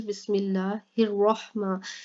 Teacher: अल्लाह से पहले मीम है और इस मीम के नीचे ज़ेर है, जिसकी वजह से हमने इस अल्लाह को बारीक करके पढ़ा है